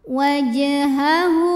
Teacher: Kemudian ada hukum qalqalah sughra karena ada huruf qalqalah yaitu jim yang sukunnya asli dan berada di tengah bacaan. Cara bacanya dipantulkan dengan pantulan yang kecil